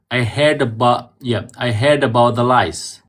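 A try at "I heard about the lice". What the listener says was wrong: Yalla, the first one you said was lies. It's supposed to be lice.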